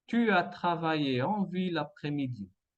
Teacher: nous avons un enchaînement vocalique entre la U et la A. En deuxième, enchaînement vocalique entre la E et la AN.